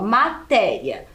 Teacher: matéria também é uma paroxítona porque ela tem a penúltima sílaba tônica mais forte